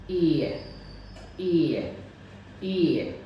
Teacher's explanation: जैसे ही मैं ए साउंड में पहुंचता हूं तो जीभ नीचे की ओर आती है और थोड़ी सी पीछे जाती है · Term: सेंटरिंग डिप्थोंग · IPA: /ɪə/